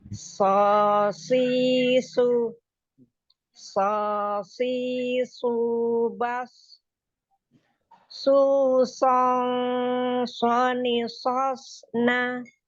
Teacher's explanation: Setiap huruf sodnya dibaca tebal.